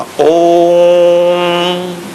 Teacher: तो कहा ओम को जब बोले ओ तो 3 गुना ताकत लगा के ऊंचा स्वर उठाना, ओ यहां तक ले जाके फिर मां बोलना, ओम। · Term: प्लुत